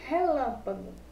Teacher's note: Se eu falo relâmpago, lã é a nossa sílaba tônica